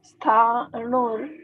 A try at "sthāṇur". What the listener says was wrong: Sthan. Stha. Like how you say sthan, right? Sthan, sthiti, right? So there's a S over here that also has to be pronounced, right?